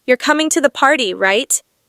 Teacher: My voice stays flat or slightly falls, signaling I'm confirming information. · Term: Flat, falling intonation